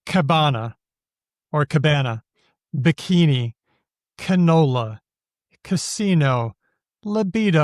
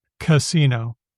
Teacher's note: You'll notice that the first syllable is always a schwa